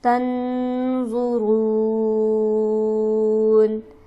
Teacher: تنظرون میں نون پر ہمارے پاس ساکن ہے، یہاں پر ہم غنہ کریں گے، اس کے بعد حرف ہلکی موجود نہیں ہے، اور آ پر ہمارے پاس مد عارض ہو جائے گا جسے ہم کھینچیں گے 4 الف کے برابر.